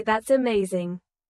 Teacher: your tone rises with excitement